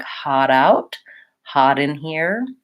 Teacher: I'm the next word starts with a vowel I'm doing neither I'm gonna be linking that T and it's gonna sound more like a D or a flap T